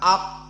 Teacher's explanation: Maka qaf tidak boleh keluar nafasnya. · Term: jahr